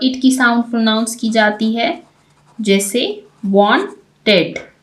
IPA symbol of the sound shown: ɪd